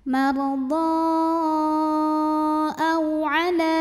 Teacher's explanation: Sedangkan hamzahnya adalah yang a pada kata aw'ala. Maka dhodnya dipanjangkan boleh 4 boleh 5 harokat. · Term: Mad jaiz munfasil